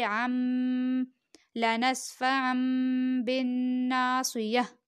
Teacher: اور اقلاب کیا ہے کہ جب نون ساکن یا نون تنوین کے بعد با آئے تو نون ساکن اور نون تنوین کو میم سے بدل کر غنہ کے ساتھ پڑھیں گے